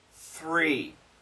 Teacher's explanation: the tongue goes back and up to the r